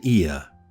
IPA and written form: ɪə (Ear)